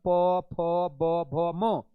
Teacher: प वर्ग में आप प बोल रहे हो, फ बोल रहे हो, ब बोल रहे हो, म बोल रहे हो, ये सब देखना आपका दोनों होठ सट जाएगा